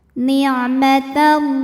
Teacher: Karena alif lam menghadapi huruf syamsiyah yaitu lam, maka alif lam tidak kita baca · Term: alif lam syamsiyah